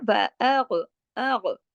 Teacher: موٹے حروف کی جو فیملی ہے غین اس میں پایا جاتا ہے، لیکن غین کو ہلانا نہیں ہے، اس کو سکون کے ساتھ ہے، لیکن اس کو جماؤ کے ساتھ پڑھنا ہے